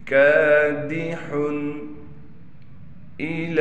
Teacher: لام پر کڑا زبر ہونے کی وجہ سے لام کو ایک الف کی مقدار کھینچیں گے، یا پر کوئی حرکت نہ ہونے کی وجہ سے یا کو نہیں پڑھیں گے